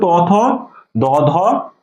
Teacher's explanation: তার মানে কি এই বর্ণগুলো আমাদের এই যে জিহ্বার ডগা, ঠিক আছে, জিহ্বার ডগাটা আমরা যখন এই বর্ণগুলো উচ্চারণ করতেছি তখন আমাদের এই জিহ্বার ডগাটা এই যে দাঁতের সাথে কি হচ্ছে স্পর্শ করে উচ্চারিত হচ্ছে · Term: দন্ত